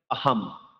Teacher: ময়ের মতো বলতে সম্পূর্ণ ম নয়, ময়ের অর্ধেক উচ্চারণ হবে। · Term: হসন্তযুক্ত ম